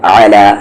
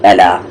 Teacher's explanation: اولئک مد کو یہاں 3 سے 4 حرکت کے ایکول کھینچیں گے. اولئک علی, دھیان سے عین کے مخرج کو صحیح کرے, مڈل تھروٹ